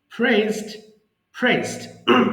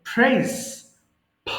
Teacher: আমাদের পি যখন শব্দের শুরুতে থাকবে, তখন সেটাকে অবশ্যই আমরা ফি উচ্চারণ করব।